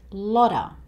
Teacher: the t sound in lotta actually sounds like it's somewhere between a D and a T. So it sounds more like lotta and a lot of bird life.